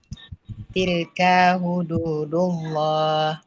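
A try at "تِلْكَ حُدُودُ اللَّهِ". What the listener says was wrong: Jangan kasih panjang dia punya Kak. Tilka terpanjang.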